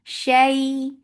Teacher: idgham with gunna, so keep the sound in your nose for a longer time.